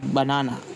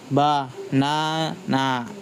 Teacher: Main stress on the second syllables.